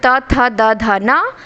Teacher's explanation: त वर्ग का दंत से